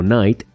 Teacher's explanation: la K se vuelve muda y no se pronuncia en absoluto